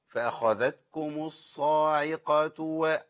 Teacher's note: العين المرققة والصاد مفخمة أخلص الصاد وبعدين أخش على العين